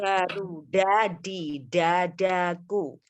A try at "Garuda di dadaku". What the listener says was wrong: Nah, itu keluar udara tuh. Bukan di dada, tapi di dada.